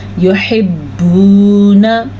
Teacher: वाव की वजह से हम बा को लंबा करके पढ़ेंगे क्योंकि ये वाव मद्दा है